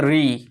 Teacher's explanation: ये मुर्धा जहां से आप ट ठ बोलते हैं वहीं से हो गया ये ऋ इसको मुर्धा मुर्धन मुर्धन वर्ण बोलते हैं ये उच्चारण हो गया